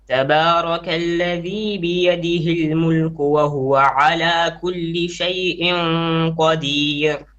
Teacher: make your ikhfa 2 beats, and make your ikhfa a little bit heavy because of the qaf